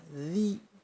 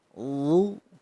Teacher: Kemudian ada huruf dha kasrah. Huruf dha itu termasuk huruf isti'ala, di mana ketika mengucapkannya maka pangkal lidah naik ke atas. Ujung lidah sama dengan dzal.